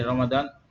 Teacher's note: Jadi ro tebal, fathahnya juga tebal.